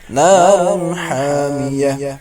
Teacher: کو پتہ ہے یہاں پر جو دو پیش کی تنوین ہے تنوین کے بعد ہا آ رہا ہے ہا حروف حلقی کا ہے اس لیے اظہار کریں گے